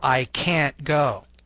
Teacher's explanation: It is sometimes difficult to distinguish between can't and can. Native speakers stress can't with a long, clear vowel, the a.